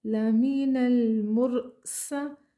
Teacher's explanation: سین میں سیٹی پائی جائے گی ، سین زبر سا پیچھے سے ملا کر پڑھیں لمین المرسا،